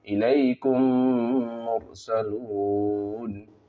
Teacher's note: میم ساکن کے بعد میم ہے تو غنّے کے ساتھ میم کو پڑھا جائے گا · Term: ادغام شفوی